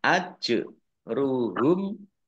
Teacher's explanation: Jim sukun dibaca qolqolah atau memantul ditampakkan pantulannya